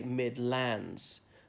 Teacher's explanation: laying the stress on the second syllable not the first